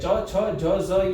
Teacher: આ ચ વર્ગ એ તાલુથી બોલાય છે તમારી જીભ જ્યાં ચ બોલતા જ્યાં તાળવે અડે છે ને એને કહેવાય છે તાલુ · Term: તાલવ્ય